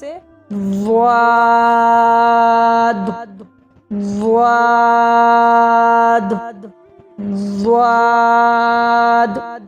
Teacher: किनारे जबान दाढ़ से मिलकर द्वाद अदा होता है।